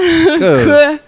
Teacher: Вот здесь абруптивный звук, он горло немножко подключается и как бы такой вот звук немножко выдыхает резко. То есть тут не сила важна, а резкость.